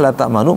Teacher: Namanya ismam. Ismam itu monyong. Artinya monyong.